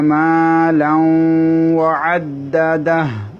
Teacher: নুন সাকিন এবং তানবিনটাকে ওয়াওর মধ্যে গুন্নার সহিত প্রবেশ করাতে হবে। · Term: ইদগামে মা গুন্না